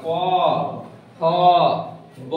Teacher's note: उसके बाद है ओष्ठ, ओष्ठ माने ओठ, जैसे प कहता है ना, तो प कहां जाके सट रहा है, प ओठ में जाके सट रहा है ना, जैसे प वर्ग हो गया, प फ ब देखो तो जीभ कोई नहीं सट रहा है, खाली दोनों ओठ पे जाके सट रहा है, जाके दोनों ओठ पर सट रहा है ना, एक दूसरे में ओठ सट रहा है।